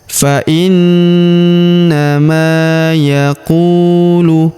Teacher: Huruf ma kita panjangkan dua harakat karena terdapat alif di depannya.